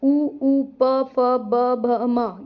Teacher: जीभ के संयोग से जो हमारे होंठ हैं वो मिल जाते हैं। इन्हें ओष्ठय वर्ण कहते हैं।